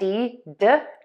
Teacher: End with that D, D, by touching the tip of your tongue to the back of your top front teeth